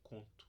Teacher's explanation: A gente fala um U um pouquinho mais fraco, um pouquinho mais baixo e aberto, conto. E aí o símbolo para ele é esse daqui, lá no alfabeto fonético internacional.